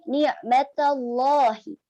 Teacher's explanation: ni'matallahi itu ada tafkhim. Ya, lafaz Allah sebelumnya huruf berharakat fathah.